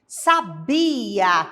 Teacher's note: sabia que vem do verbo saber é a penúltima sílaba que é a sílaba tônica